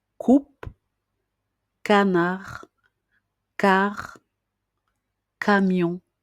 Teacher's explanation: Et c'est normal parce que le son c'est un son que l'on dit non voisé, donc un son qui ne produit pas de vibration